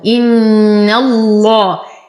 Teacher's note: نتم كسرة الهمزة، نشد النون بغنى أكمل ما تكون إن الله. ننتقل من فتحة النون إلى تغليظ اللام في اسم الجلالة جل في علاه. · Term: غنة